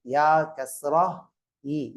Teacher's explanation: இந்த யா உச்சரிக்கும் போது நாவின் நடுப்பாகத்திலிருந்து சொல்லணும்